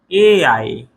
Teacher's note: केवल वा दंतोष्ठ में ए आए कहे कंठ तालु, ए आए, ए आए कहे कंठ तालु। कंठ और तालु दोनों से मिलकर ए आए का उच्चारण होता है